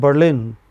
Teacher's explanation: A city called Berlin is stressed on the final syllable.